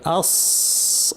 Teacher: সিন এবং সদ একই জায়গা থেকে আসে, জিহ্বার শীর্ষ নিচের পাটির দাঁতের গোড়ায় লাগিয়ে সিন এবং সদ, কিন্তু সদের আওয়াজটা ভারী, আওয়াজটা উপরে ঠেলতে হবে।